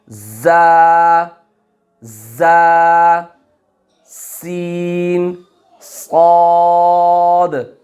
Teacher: इनको हुरूफ सफ़ीरिया कहते हैं, यानी इनमें सीटी की तरह की आवाज़ होती है